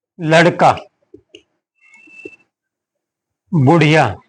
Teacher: दोनों सघोष है दोनों का उच्चारण स्थान मूर्धा है